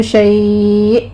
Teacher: حمزہ کے اوپر جھٹکے کے ساتھ وقف ہوگا، 3 سے 4 آپ نے کاؤنٹ کر لینا ہے۔